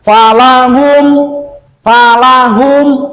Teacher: Nah, mim mati ini ketemu dengan hamzah ataupun ya a. Jadi membacanya jangan dilamakan di M-nya nih.